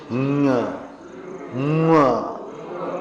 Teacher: ओंठ बनेंगे लेकिन हवा नाक से निकलना चाहिए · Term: अनुनासिक